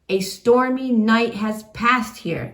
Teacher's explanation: We have iambic trimeter with an extra unstressed beat at the end. And that is called a feminine ending, where you end on a downbeat instead of an upbeat.